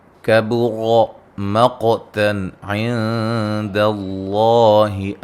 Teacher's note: کبر، را کو موٹا ادا کریں گے، قاف کو موٹا ادا کریں گے، قاف کو ہلا کے پڑھیں گے